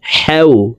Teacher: হ্যাঁ হরফ হলকের মধ্যখান থেকে উচ্চারণ করে পড়ব, কারণ হ্যার মখরাজ হলকের মধ্যখান থেকে হবে